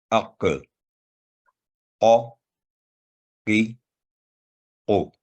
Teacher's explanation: حلق کے قریب زبان کے سب سے پچھلے حصہ کو اوپر تالو کے ساتھ لگانے سے یہ حرف ادا ہوتا ہے، اور ہمیشہ بھاری آواز میں ادا ہوتا ہے